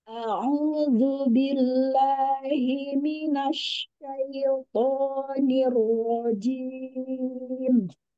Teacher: syin ada sifat tafasi dari tengah lidah ya berbeda dengan Sin